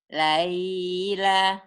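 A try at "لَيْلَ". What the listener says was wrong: Laila. Pendek, nggak ada panjang. Lin. Laila.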